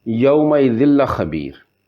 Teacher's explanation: لام اور را 2 ایسے حروف ہے کہ جنہوں پر ادغام تام یعنی مکمل ادغام ہونا، نون جڑی آواز ہے وہ ختم ہوئی گا